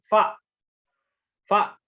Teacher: Terakhir huruf fa, ujung dua gigi seri atas bertemu bibir bawah bagian dalam